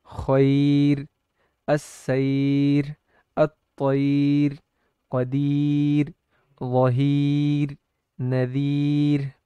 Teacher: را کو اب ہر حال میں باریک ہی پڑھا جائے گا، اس لیے کہ یا دو کسروں کے قائم مقام ہے